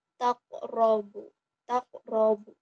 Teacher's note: Di huruf ro-nya itu ada hukum tajwid tafhim. Mengapa? Karena ada huruf ro berharokat fathah. Nah, cara membacanya dibaca tebal, yaitu takrobu, takrobu.